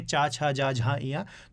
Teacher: तो आपकी जीव जो है वो तालु से टकराएगी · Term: तालव्य